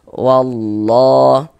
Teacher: Maka lafaz Allahnya dibaca tebal. Huruf lam jalalahnya tuh dibaca tebal. Dibaca tabkhim. · Kalau ada lafaz Allah, sebelum lafaz Allah ada tanda baca fathah seperti ini, atau ada lafaz Allah yang sebelumnya ada tanda baca dhammah, harokat dhammah, maka lafaz Allahnya dibaca tebal. Huruf lam jalalahnya tuh dibaca tebal, dibaca tafkhim. Kita tebalkan.